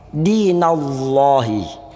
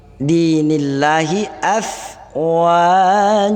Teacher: Kenapa lafdzul jalalah ini tipis bacaannya? Karena dipengaruhi oleh huruf baris di bawah ni.